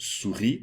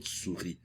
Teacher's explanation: So the word souris, meaning mice, souris clearly is a problem area for students because they've got to deal not only with the OU, the OU, but also the silent S at the end, not to mention the uvular R in the middle